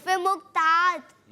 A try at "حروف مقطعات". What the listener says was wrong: قاف آ رہا ہے لیکن طا کے اوپر جو ہے نا تشدید کر کے نہیں پڑھ رہے.